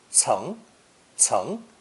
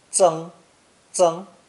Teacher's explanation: It's pronounced second tone, ceng, ceng, and sometimes first tone, zeng, zeng, when it's a surname.